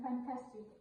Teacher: We can't say fantastic or fantastic. The stressed syllable is in the middle.